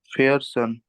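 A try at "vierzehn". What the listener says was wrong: फिर सेन, बिल्कुल सही।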